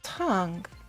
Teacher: The second tone goes up. Let's start the second tone at a lower pitch so it will be easier to go up to a higher pitch.